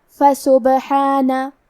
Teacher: کلمت فسبحانہ میں حرف البا پہ جزم ہے، یہاں با کا حکم ہے قلقلہ، قلقلہ کا معنی ہے حرف ساکن کو ہلانا، تو ہم حرف البا کو ہلاتے ہوئے یہ کلمہ کو پڑھیں گے۔